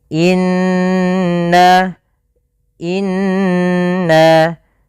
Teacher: Cara membacanya yaitu kita menahan suara. Kalau di sini nun berarti kita tahan n-nya sepanjang dua harakat sampai tiga harakat ya. Tapi dua lebih sedikit saja. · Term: bacaan ghunah